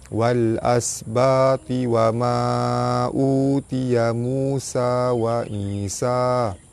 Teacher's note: Alif lam bertemu dengan hamzah, alif lam qamariyah, lam dibaca jelas.